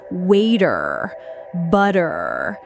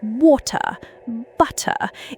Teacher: And then there's the T sound, like in words like water or butter. Americans often use a flapped T sound, which sounds a bit like a D sound · Americans often use a flapped T sound, which sounds a bit like a D sound, waiter, butter. Whereas in British English, it's a much harder T sound